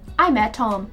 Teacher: the T at the end of met and the T at the start of Tom become one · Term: Remove sounds